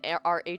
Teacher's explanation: And even RH sound, that is a glottal fricative. So you're making that sound down in your glottis, all the way down in your throat.